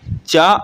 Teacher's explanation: अघोष तालव्य अल्पप्राण है